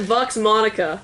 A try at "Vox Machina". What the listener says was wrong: Vox Machina. First of all, you switch the N and the CH. Or the K or whatever.